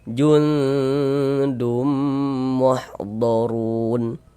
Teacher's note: di bagian junnya tuh kita tahan sejenak suaranya. Kita panjangkan sepanjang dua harakat. Kita dengungkan jundum muhdorun. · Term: ikhfa hakiki